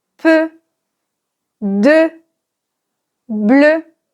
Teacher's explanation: C'est un E fermé parce que la bouche est plutôt arrondie.